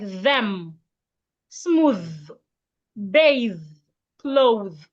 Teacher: Put your tongue in between your teeth and make vibration. The. We have it in words like them, smooth, bathe, clothe.